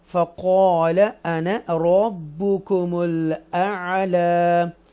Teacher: ہم بولڈ پڑھیں گے قاف کو